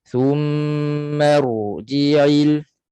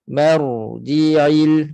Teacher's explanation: Jadi ra ini bersifat dengan tawassut, pertengahan, pengaliran suaranya pertengahan. Jadi tak boleh kita baca ra mati ini dengan putuskan suara pada ra.